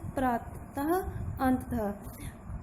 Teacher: अह के पीछे जब हम बोलते हैं तो शब्द के पीछे हल्की ह की आवाज़ आती है। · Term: विसर्ग